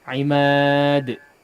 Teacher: Di qalqalah huruf dal terakhir ya. Langsung dipantulkan.